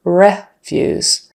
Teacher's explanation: refuse stress on the first syllable and the vowel is short e